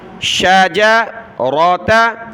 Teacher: شجرتہا، شین جیم را تا چاروں پر زبر ہے، ہا پر مد ہے، اس کو اوپر کھینچنا ہے